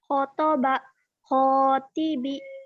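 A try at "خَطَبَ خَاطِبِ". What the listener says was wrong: Bagus.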